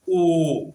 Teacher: ओष्ठाकृत के आधार पर मतलब आपका ओठ कैसा बन रहा है, गोल बन रहा है कि चपटा बन रहा है। ऐसे ओ गोल बन गया, आ खुल गया, ई पतला हो गया